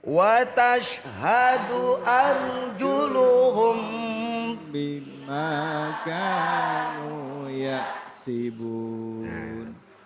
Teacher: Kalau ikhfa syafawi. Ikhfa artinya samar, tapi mulut harus rapat. Kenapa? Di depannya ada huruf ba.